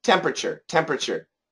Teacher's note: we say temp, pr with a schwa and then a chur.